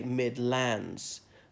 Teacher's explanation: laying the stress on the second syllable not the first